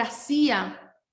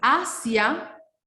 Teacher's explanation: Hacía tiene la fuerza en la débil, ¿sí? Hacia, no, ¿sí? Tiene la fuerza en la A.